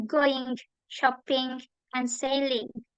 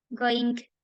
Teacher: Bunyi eng dan juga di akhirannya itu seperti ada g-nya.